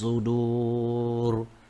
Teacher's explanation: Huruf sad bukan huruf sin. Sudur tebal, isti'la tebal.